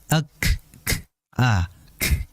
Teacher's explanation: kaf ini memiliki sifat hamas, yaitu apa? Udara atau desisan yang mengalir. Ak, k, a, k, itu udara untuk huruf kaf.